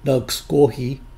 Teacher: Pronounced directly from the syllables, this word would sound like nagisgohi. In colloquial speech, the second vowel is dropped to sound more like nagsgohi.